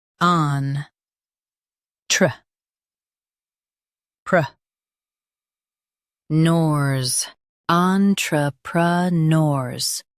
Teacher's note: Emphasize neurs and keep on light.